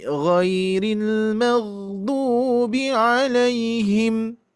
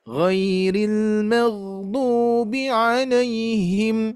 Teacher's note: Ada yang terakhir adalah sukun ya. Yang akhir-akhirnya itu tidak 2 harokat, tidak 4 harokat, tapi sukun ya.